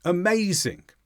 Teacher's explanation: word we usually have one syllable that is the strong syllable in amazing the strong syllable is maze the other sounds can be weaker because they're not the stressed syllable